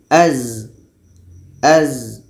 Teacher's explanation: Ujung lidah menempel dengan bagian atas gigi seri bawah. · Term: Zai